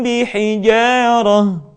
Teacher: mim mati ketika beremu dengan huruf ba tidak sempurna rapat melainkan agak direnggangkan sedikit